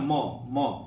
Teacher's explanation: म यानी होठ, दोनों होठ सट जाएगा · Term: ओष्ठ